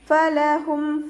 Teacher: ഹഇൻ്റെ മഖ്റജ് അഖ്സൽ ഹൽക്കാണ്, സൗണ്ടിനെ വ്യക്തമാക്കി കൊടുക്കുക